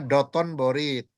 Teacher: Terus nun mati ketemu ba, kan jadi mim kan?